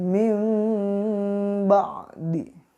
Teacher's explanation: ketika nun mati atau tanwin bertemu dengan huruf ba, pembacaannya diganti ke huruf mim. Contoh, mim ba'di.